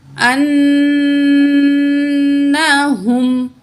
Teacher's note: یہ گلے سے نچلے جو ہے، گلے کے نیچے سینے کی طرف والے حصہ، ادھر سے یہ ہا ادا ہوتی ہے، ٹھیک ہے۔ ایک ہوتی ہے ہا، ہا، وہ دوسری ہا ہوتی ہے، ٹھیک ہے۔